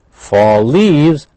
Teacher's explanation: fall leaves that's blended we have one l same or similar sound